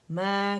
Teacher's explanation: माँ नहीं बोलेंगे, गुन्ना नहीं इसमें आना चाहिए। मैं मीम फतह अलिफ सुकून, मैं बाहर आवाज़ निकले, ठीक है।